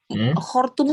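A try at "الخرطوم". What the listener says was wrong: Khartum itu ibu kota sudah. Tadi Anda bilangnya khurtum ya. Khurtum itu belalai kalau khurtum. Tapi kalau Khartoum ini ibu kota Sudan.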